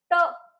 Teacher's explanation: ट ची लाईन मूर्धन्याची आहे